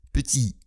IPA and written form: pəti (petit)